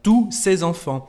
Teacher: como lo pueden escuchar, no se pronuncia aquí la S final.